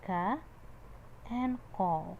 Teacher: From the back of the tongue we have got ka and qaf